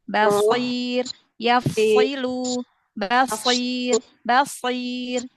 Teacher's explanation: Jadi diangkat lagi pangkal lidahnya ya, bedakan huruf sodnya ya, karena memang sifat isti'la itu adalah sifat lazimah pada huruf sod. Karena kalau dia tidak menampakkan sifat isti'la dan itbaqnya pada huruf sod, nanti khawatir terdengar seperti huruf sin, karena makhrajnya sama ya.